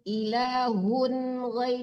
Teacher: ilahun harus jelas tanwinnya itu namanya izhar ya, jangan hung. Ilahun ghai, jangan tertahan di situ.